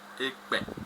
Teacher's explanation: le E aussi se prononce un peu comme en français, comme le E ordinaire et est très fermé.